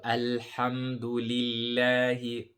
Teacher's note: The word Allah here will be also pronounced lightly because there's a kasra before the lam of Allah.